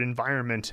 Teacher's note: You don't really articulate the N very much.